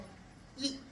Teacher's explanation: ఈ 5 కాకుండా ఈ తన ఉత్పత్తి స్థానాన్ని బట్టి తాళవ్యముగా ప్రసిద్ధి పొందింది. తాలువు అంటే దవడ, దవడల యొక్క చలనం ద్వారా, సహాయం ద్వారా ఉత్పత్తి అయింది కాబట్టి ఈ అనే అచ్చుని తాళవ్యము అని ఆలంకారికులు దానికి పేరు పెట్టారు.